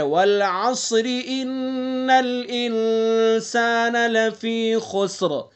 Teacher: ان نون مشدد ہے تو اس لیے انا کے اندر غنہ کریں گے